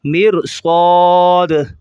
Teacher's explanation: میم را زیر مر، صاد الف زبر صا، مر صا، دال دو زیر دین، مر صادین، وقفاً مر صاد، مر صاد۔ را کو موٹا کریں گے، صاد کو موٹا کریں گے